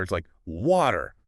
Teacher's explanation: Speakers of these dialects often use glottal stops, meaning they drop the T in words like water or better.